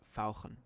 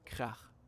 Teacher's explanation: German has the special ach sound, which sounds very throaty.